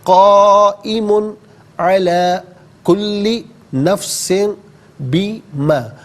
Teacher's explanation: تنوین کے بعد حرف حلقی آ رہا ہے تو غنہ یہاں پر نہیں کیا جائے گا، یہاں پر اظہار ہوگا. قائم علی کل نفس بما.